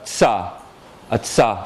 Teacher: These are two affricates that are sort of like putting duh and zuh, in the first case, or tuh and suh, in the second case, together into one sound. These sounds are exactly like ta and da, except they're not stops.